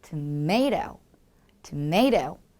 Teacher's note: tomato, tomato 이렇게 A에 강세를 주면서 살짝 고개를 움직여주면 좋은 거죠